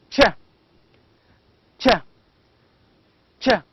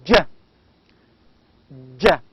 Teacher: ch, palatal, affricate, voiceless sound, while j is palatal, affricate, voiced sound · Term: affricates